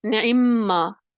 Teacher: نعمہ یعنی غنہ بھی آ جائے گا کیونکہ میم مشدد ہو جائے گا